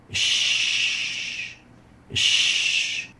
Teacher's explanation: it articulates at the wide area at the middle of the mouth between the tongue and the heart palette producing the sh sound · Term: sheen